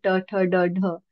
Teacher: मूर्धन्य म्हणजे दाता आणि तालाच्या मधली जागा मूर्धन्य, तिथे टच करून जे उच्चार होतात जसं ट ठ ड ढ, ते मूर्धन्य.